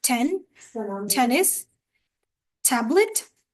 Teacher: T sound is also uttered with puff of air.